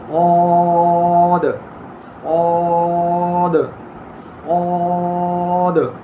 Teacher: یہ ہونٹ گول کریں گے تو یہ غلط ہو جائے گا. ہونٹ گول کرنے سے پور نہیں ہوتا، زبان کو پیچھے سے بلند کرنا ہوتا ہے · تو مستعلیہ میں سے ہے تو زبان کی جڑ کو پیچھے سے بلند کریں گے، اور صفریہ میں سے ہے تو سیٹی کی طرح آواز بھی نکالیں گے جس طرح سین میں سے زا میں سے نکالی.